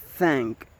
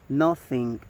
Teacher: It is the sound, and the initial position example is thank, and the middle example is nothing, and the final example is bath. The voicing is voiceless. The place of articulation is dental